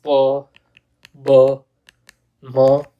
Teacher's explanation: bilabial, where both the lips touch at the time of talking